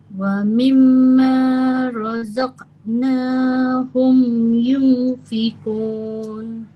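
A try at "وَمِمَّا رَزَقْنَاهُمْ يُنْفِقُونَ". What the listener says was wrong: Samar-samar sudah dapat tapi dengung kurang 2 harokat. Yunfikun.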